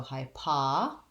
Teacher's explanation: make sure you hold the i sound long enough um but overall the high syllable is short and unstressed